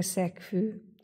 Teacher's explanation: g-t mondunk hanem hangot ejtünk és ez pontosan azért van mert a g hang az egy zöngés hang az f egy zöngétlen viszont a kimondott szóban ugye a k is és az f is zöngétlen ezért mondhatjuk hogy zöngéség szerint hasonult hiszen a g a k-nak